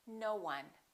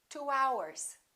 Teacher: when we have the sound O, this sound, O, for example, no. We don't say no one, we link it, we put a little w in there, and we say no one. · we don't say no one we link it we put a little wha in there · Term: little W sound